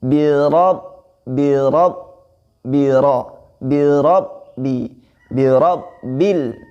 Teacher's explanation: Huruf ba-nya di situ ditasjidkan, bukan birobi, tapi birob ya.